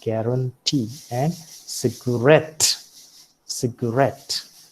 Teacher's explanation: See, the accent does not usually fall upon the first syllable. It can also fall upon the last syllable, as you find here in guarantee and cigarette.